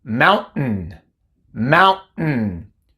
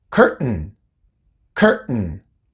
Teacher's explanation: Tenemos la oclusión glotal, ba, y después simplemente una N.